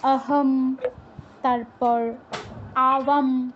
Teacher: যেই জায়গায় অনুস্বার পাবেন উচ্চারণটা হবে ময় হসন্তর মতো।